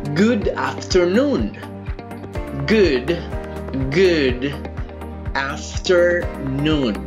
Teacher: el acento lo tenemos en noon, no en after.